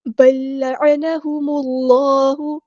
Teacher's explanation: میم کو ہم نے لام کے ساتھ ملا دینا ہے، حمزۃ الوصل کا ڈراپ ہو جائے گا